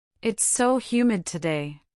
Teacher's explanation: Listen to the emphasis on so, expressing the intensity.